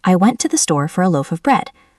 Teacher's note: Let's identify the strong words. Went, store, loaf, bread. These are the heavy beats.